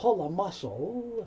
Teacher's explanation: The L moves over, so you don't hear pull A